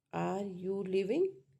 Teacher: This is the symbol for rising tone and pitch rises to a high level